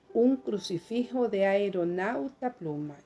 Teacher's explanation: voy a unir dos sílabas, que es AE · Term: sinéresis